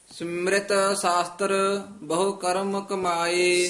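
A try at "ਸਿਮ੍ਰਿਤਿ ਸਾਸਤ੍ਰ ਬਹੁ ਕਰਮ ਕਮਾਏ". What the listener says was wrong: शास्त्र रारा पूरा नी, शास्त्र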